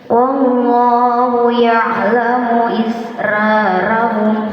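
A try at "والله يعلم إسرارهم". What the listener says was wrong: Wa di situ tipis. Jadi waw dalam keadaan apapun itu tipis. Wa ini sulit nih. Makanya menyongkan dulu, senyumkan. Wallah. Jangan wallah. Kadang kalau ada tebal atau empat misalnya, jadi fokus pada huruf itu. Wallah. Jangan wallah, jangan juga itu.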